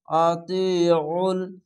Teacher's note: আইনটিকে মোটা করে গলা চিপে পড়বেন। জের পাশে ইয়া সাকিন এক আলিফ টেনে পড়বেন।